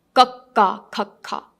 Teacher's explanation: So the sound comes from the back of your mouth.